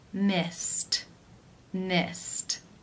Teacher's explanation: the final infinitive sound is the S sound that is unvoiced so it is case 1 where the e D is pronounced as the T sound